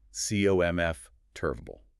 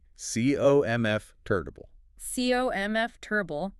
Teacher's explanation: So the or and the ta just collapse entirely into the schwa.